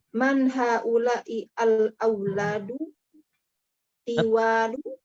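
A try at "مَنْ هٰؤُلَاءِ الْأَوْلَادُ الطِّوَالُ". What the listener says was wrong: Jadi di sini tinggal pakai apa, alif lamnya disambung. Man haulail auladut tiwalu.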